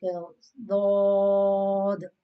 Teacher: this is pronounced from the edge of the tongue, side of the tongue touching the mole on the roots of the molar, like dod on it.